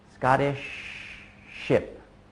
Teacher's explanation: Instead of pushing the air out continuously like Scottish ship, I just pause very briefly.